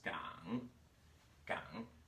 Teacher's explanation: 香 and 港 as a third tone dips.